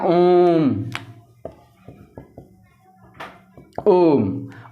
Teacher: जिसको बोलने में हर्ष स्वर का 3 गुना समय लगे उसको क्या कहते हैं, प्लुत स्वर